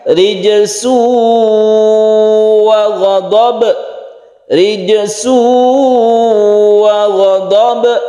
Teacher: Kemudian mim bertemu ra, idhar syafawi, rijsu wa ghadab, ada tanwin bertemu dengan waw, kita sebut dengan idgham bi gunnah. Bi gunnah artinya dengan dengung, kita panjangkan ketika kita membaca su, ada tasydid waw, jadi kita tabrakkan atau kita tekan ke waw dan kita panjangkan.